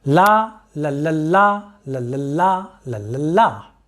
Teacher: each foot containing a long syllable followed by 2 short syllables. The pattern is like this: la, la, la, la, la, la, la, la, la, la. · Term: dictylic hexameter